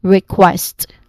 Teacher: The syllable stressed is on the second syllable quest. · This short a sound is sandwiched between two consonant blends from the beginning and the end. So for the beginning, there's a KW consonant cluster, and then for the end is ST. Okay, so you say it as request.